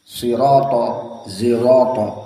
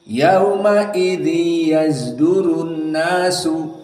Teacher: Maka shad dibaca ismam za